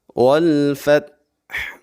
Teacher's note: تا کو ہلانا نہیں ہے اور لاسٹ میں ہا کو واضح کرنا ہے۔